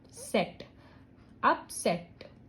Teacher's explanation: सेट वाले sound को आप थोड़ा बड़ी आवाज में बोलोगे, थोड़ा स्ट्रेस उसमें डालोगे, और जब आप बोल रहे हो ना इस वर्ड को, ऑटोमेटिकली आपकी जो जॉ है वो थोड़ा सा ड्रॉप होगी नीचे इस वाले सिलेबल पे. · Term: स्ट्रेस्ड सिलेबल